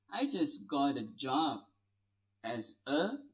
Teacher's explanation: because it's the American English, so you can link got and it will sound like gotta. I just got a job as a.